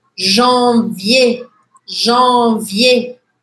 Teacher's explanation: escreve com um R no final, mas eu não pronuncio.